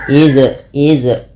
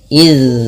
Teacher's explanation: Maaf, dengan sifat namanya rokhawah. Itu zalnya mengalir bunyinya. Tidak putus dan tidak memantul.